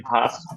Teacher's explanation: ভাস না তো, বাস, বাস, ভাস বললে কিন্তু বাতাস বের হবে।